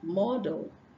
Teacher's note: when you say del, then you are pronouncing the schwa sound